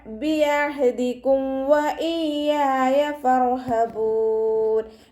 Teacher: ഇവിടെ ഇദ്ഹാർ ഷഫവിയാണ് വീണ്ടും വരുന്നത്. മീം സാക്കിനിയെ വ്യക്തമാക്കി മണിക്കാതെ ഉച്ചരിച്ചു കൊടുക്കുക.